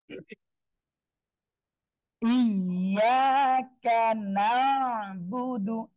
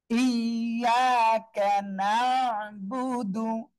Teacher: আইনটা গলাটা চেপে পড়তে হবে